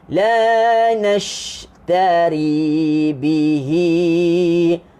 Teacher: Hamburan angin. Jadi bunyi dia nash. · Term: tafashi